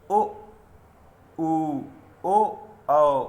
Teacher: इनको बोलने में हमारा जो मुख है उसका आकार कुछ गोल सा हो जाता है। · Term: वृत्तमुखी स्वर